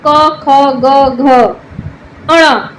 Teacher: क, ख, ग, घ, ण यह पांच व्यंजन कंठ से बोले जाते हैं। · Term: कंठ वर्ण